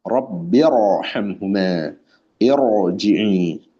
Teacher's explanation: ketika ra-nya sukun, sebelumnya hamzah wasal. Ya, sebelumnya hamzah wasal. Maka tebal juga ra-nya. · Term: ra tafkhim